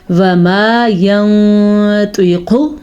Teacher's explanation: نون ساکن کے بعد طوا حروف اخفا میں سے آیا ہوا ہے، تو نون ساکن کی آواز کو چھپا دیں گے، اس قاعدے کو اخفا کہتے ہیں۔